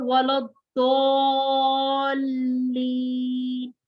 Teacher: और वलद्दोल्लीन, इसको आपने दौद को लाम के साथ मिलाना भी है, मद भी करनी है और इसको मिलाना भी है। दौद को मोटा और पुर पढ़ना है।